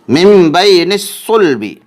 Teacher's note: نون ساکن کا اقلاب ہو رہا ہے کیونکہ نون ساکن کے بعد با آ رہا ہے، اس لیے نون ساکن کو میم ساکن سے بدل کر غنہ اور اخفا کے ساتھ پڑھیں گے۔ یا لین ہو رہی ہے کیونکہ یا ساکن سے پہلے زبر ہے، اس لیے یا لین ہوگی۔